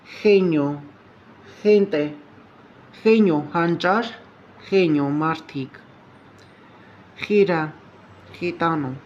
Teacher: E և I ձայնավորներից առաջ արտասանվում է մի փոքր լարված, հայերեն Խ,